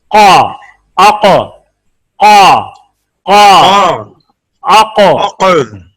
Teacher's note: using base of tongue touching the soft part of palates and make thick sound for cough